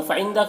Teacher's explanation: फ़इंदा नून में इख्फा हो रहा, नून के आवाज़ को नाक में छुपा कर पढ़ेंगे